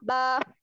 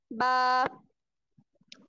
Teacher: बा में हम क्या करते हैं कि जो हमारे होंठ हैं उनका जो गीला हिस्सा है उसको आपस में सख्ती से लगाते हुए बारीक आवाज में पढ़ेंगे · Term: बा का मखरिज